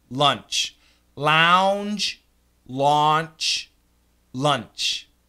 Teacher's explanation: the J is vibrated the CH is not